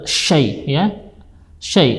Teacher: huruf shin berada di tengah lidah